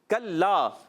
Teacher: کاف کا مخرج ہے زبان کی جڑ اور تالو کا سخت حصہ